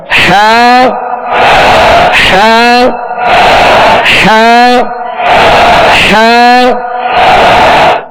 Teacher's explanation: इसको वस्ते हल्क से बिल्कुल इजी अदा करना है तकल्लुफ से अदा नहीं करना